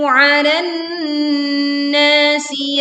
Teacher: Leburkan alif lam ke nun sehingga alif lam tidak dibaca karena langsung dimasukkan ke huruf nun disertai dengung yang sempurna karena kita dapati nun bertasydid.